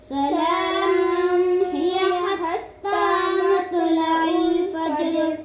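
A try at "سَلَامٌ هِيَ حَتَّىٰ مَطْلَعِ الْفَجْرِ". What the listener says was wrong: मुन पे गुन्ना नहीं करना और मत तो को मोटा पढ़ना है। सलामुन पे गुन्ना नहीं करना।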